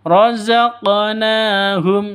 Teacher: berlaku hukum Qalqalah dipantulkan ke huruf qofnya atau ke huruf qalqalahnya ada di tengah berarti Qalqalah Qalqalah Sugra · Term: qalqalah sughra